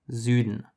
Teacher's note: It's a much softer S, while the English version, south, has the sharp S.